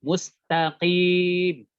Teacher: Mustaqim, bukan dari hidung, tapi dari al-jauf. Mustaqim. Kalau antum untuk mendeteksinya, antum silakan pencet rongga hidung.